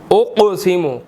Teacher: قاف جو ہے وہ موٹا بھی ہے اور ساکن بھی ہے، تو یہاں پر ہم نے اس کو قلقلہ بھی کرنا ہے، ہلا کر بھی پڑھنا ہے، ٹھیک ہے۔ اقسم موٹا بھی کرنا ہے، قلقلہ بھی کرنا ہے، ٹھیک ہے۔